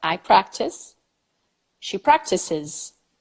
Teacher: there is a third syllable now included with another vowel